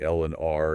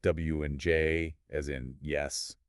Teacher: the articulators come close together but not close enough to create friction, so they're smoother and more open sounding. Right, like liquids like L and R and glides, or semi-vowels like W and J, as in yes. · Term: approximants